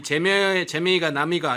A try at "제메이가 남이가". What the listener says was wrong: 발음 잘하셔야 돼요. 제메이가 남이가 제명이가 아니죠. 제메이.